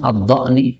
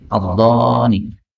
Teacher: ini hamzahnya boleh dihilangkan menjadi ad-dhani